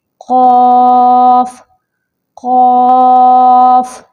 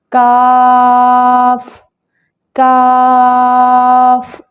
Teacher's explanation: قاف کا مخرج ہے نرم تالو کے ساتھ لگے گی کوے کے پاس زبان کی جڑ، اور کاف کا مخرج ہے سخت تالو سے لگے گی کوے سے تھوڑا آگے، یعنی منہ کی جانب، تو یہاں سے کاف ادا ہوگا۔